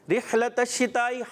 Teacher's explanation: ہا کی ادائیگی کلیئر ہونی چاہیے واضح حلق کے درمیان کے حصے سے